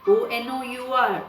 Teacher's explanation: The spellings are Honor. But when we speak, H is silent. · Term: silent H